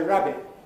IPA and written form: ˈræbɪʔ (rabbit)